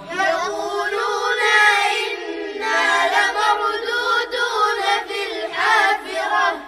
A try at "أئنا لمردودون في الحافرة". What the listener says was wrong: وضح الهمزتين ها